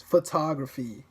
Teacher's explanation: in the English word photography, you say the second syllable with more force.